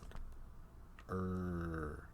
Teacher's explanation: the American R is a Glide I can hold the American R sound